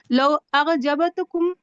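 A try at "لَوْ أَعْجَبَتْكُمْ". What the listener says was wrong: یہ آ وہ نہیں، الف عین اعجبتکم، بس الف اور عین جو ہے وہ حلق سے عین کی آواز نکلے گی۔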